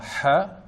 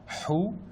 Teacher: il faut expirer de l'air sans faire vibrer ses cordes vocales, sauf au moment de prononcer les voyelles. Comme par exemple, si on met une fatha, on dira ha. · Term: lettre Ha